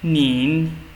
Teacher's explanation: Nin means you, okay, with a second tone.